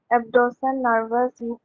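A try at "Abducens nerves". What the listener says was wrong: Not nervous, nerves.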